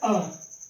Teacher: ऐसा वर्ण जिनका उच्चारण करने पर मुख द्वार क्या हो? आधा खुलता हो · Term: अर्ध विवृत स्वर